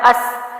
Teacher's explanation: سین جو ہے سیٹی کے ساتھ ہے، باریک آواز کے ساتھ ہے